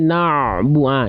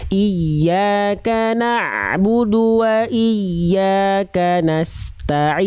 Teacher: Ini udah siap-siap bu, ainnya belum tuntas. Tuntaskan dulu ain baru masuk ke bu. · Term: ain sukunya